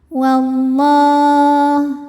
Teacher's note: lam pada lafaz Allah atau lam jalalah dibunyikan secara tafkhim. Sebab huruf sebelumnya berbaris fathah maka dibacanya tebal. Wallah. Kemudian alif lamnya dinamakan dengan alif lam syamsiyah. · Kemudian alif lamnya dinamakan dengan alif lam syamsiyah. Karena alif lam menghadapi huruf syamsiyah yaitu huruf lam. Maka alif lam ini tidak kita baca atau disebut dengan idgham syamsi.